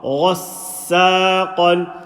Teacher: Say the Qaf. Ghain full mouth, Qaf full mouth.